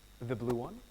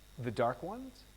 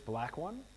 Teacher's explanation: the second speaker uses rising intonation to ask for clarification